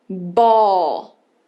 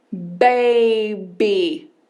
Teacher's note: Em inglês o nome dela é B e o som é B. É um som que a gente chama de bilabial, o nome já explica. A gente encosta os dois lábios